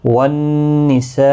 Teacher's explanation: والنساء نون مشدد پر غنہ ہوگا۔